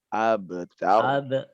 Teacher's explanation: Ro-nya dia ditebalkan lagi.